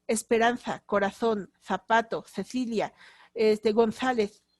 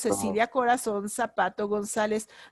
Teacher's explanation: las c y las z son interdentales · Porque tienen algo que se llama cefeo, es decir, la C y la Z son interdentales.